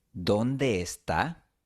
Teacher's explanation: No es natural. Lo más natural es unir las dos E. El resultado puede ser una E larga con un ligero cambio de entonación.